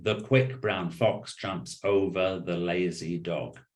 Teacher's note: more or less every syllable in the sentence has the same emphasis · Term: syllable timed